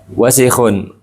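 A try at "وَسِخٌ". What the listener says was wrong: Diulangi, panjang pendeknya.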